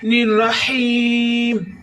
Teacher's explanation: ہا کی آواز حلق سے نکالیں گے۔ الرحیم، ہا کی آواز پھر حلق سے نکالیں گے، اور یہ یائے مدہ ہے۔